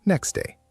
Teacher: In slow speech, next day. But in fast speech, the T often disappears. It sounds like next day. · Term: elision